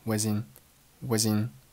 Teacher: 前三个单词 I was in 都是弱读，语速很轻，声音很快，一带而过，并且 was 和 in 连读成了 was in was in